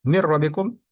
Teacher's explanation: Bila guna hurufnya lam dan ro. Nun sukun atau tanwin, huruf berbaris an, in, un bertemu ro atau lam. Nah, ini tidak dengung. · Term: Idgham bila guna